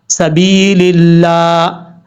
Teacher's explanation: سین جو ہے یہ سیٹی کے ساتھ پڑھا جاتا ہے، حروف صفیریہ میں سے ہے، اور سین کے بعد با ہے، با کے بعد یا ہے۔ یہ با کے بعد جو یا ہے یہ یا مدہ ہے، ایک الف کی مقدار، اس کو لمبا کر کے پڑھا جائے گا۔